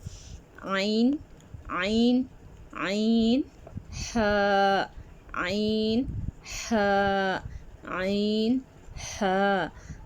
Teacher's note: حلق کے درمیانی حصے سے عین اور ح ادا ہوتے ہیں۔